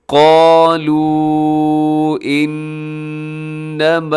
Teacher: قالو انما، اور انما میں نون کے اوپر شد ہے، یہاں اپنے غنہ کرنا ہے، آواز کو ناک میں لے کے جانا ہے · قالو اس کے اوپر مد ہے، مد جائز، مد منفصل، اپنے اس کو 3-4 سیکنڈ تک لمبا کرنا ہے